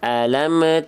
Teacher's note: jangan sampai ada bunyi memantul tambahan bunyi e di ujung mem · Karena mim nggak punya sifat yang disebut dengan kolkola. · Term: mim sukun